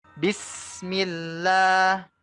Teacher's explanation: sinnya kita tekan rasakan anginnya itu keluar bu rasakan udaranya keluar ya bis ditekan s-nya ya sinnya ditekan ya inilah yang disebut